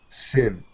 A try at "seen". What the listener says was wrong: Okay, give me a long me E a sound. Instead e of sound, sin, sin, it's E, C, seen.